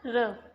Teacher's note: वे वर्ण जिनके उच्चारण में जीवा को 2-3 बार कंपन करना पड़ता है, प्रकंपित वर्ण कहलाते हैं। · जैसे र को बोलकर देखो, कंपन सा महसूस होता है। इसमें ये एक ही व्यंजन है जो प्रकंपित और लुंठित व्यंजन है।